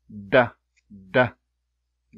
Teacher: while the plosive is a sudden for example when I say I just keep the air inside then abruptly release